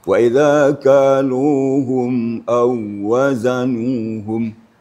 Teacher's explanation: Setelah wau sukun ada pula wau bertasydid. Nah, ini jangan sampai kita panjangkan, hanya sekedar mentasydidkan wau musyaddadah